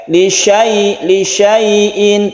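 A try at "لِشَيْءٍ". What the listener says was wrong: tanpa panjang, syinnya itu tidak panjang.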